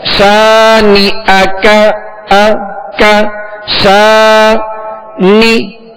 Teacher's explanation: اسی طرح شانئک، تو اس کو ہم نے تھوڑا سا کھینچا، الف مدہ، تو اس کو ایک الف کی مقدار میں کھینچ کر پڑھیں گے.